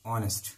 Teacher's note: এখানে দেখো এইচ এর উচ্চারণ হচ্ছে না